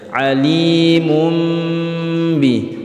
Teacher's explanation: menjadi Meme disertai dengung Alim umbi bukan lagi kali monbi Ih tapi tanwinnya dirubah menjadi suara huruf mim disertai dengung yaitu ketika tanwin atau nun sukun bertemu dengan huruf ba Alimun